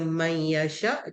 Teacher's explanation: kita kena dengungkan Ma dua harakat dengung Yasya macam tulah itu bunah bilaunah tak ada dengung masuk terus